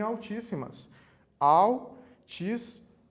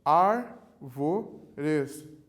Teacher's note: E proparoxítona, quando a antepenúltima sílaba é tônica.